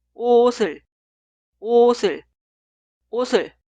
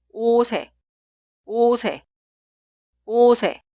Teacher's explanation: la consonante final 시옷 se traslada al lugar de i응 en la sílaba posterior y se pronuncia 시옷 como consonante inicial. Por eso la primera frase suena 옷이, 옷이, 옷이.